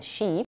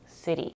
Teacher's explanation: long when it's stressed, as in sheep, but short when it's unstressed, as at the end of the word city